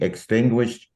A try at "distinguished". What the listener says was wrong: I think you meant D. Did you not? I hope so. Yeah,